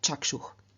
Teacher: Chakshus, in the nominative, vocative, accusative singular, does not add an ending, and so again, through external sandhi, the s changes into visarga, and so we get chakshuh.